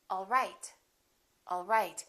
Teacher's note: my pitch goes down at the end for a statement